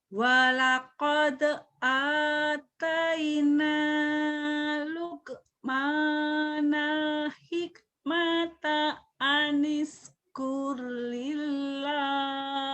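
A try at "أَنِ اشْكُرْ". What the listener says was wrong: Lumayan, cuma sinnya anish ya. Anish kur lillah.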